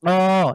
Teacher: খনন শোনাচ্ছে আপনি কন্ঠের জিভের গোড়া জায়গাটা গোড়া থেকে উচ্চারিত হবে জীভের গোড়া তালুর তালুর সাথে লাগিয়ে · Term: কফ